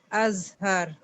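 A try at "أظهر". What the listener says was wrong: اظہر موٹا کرنا ہے.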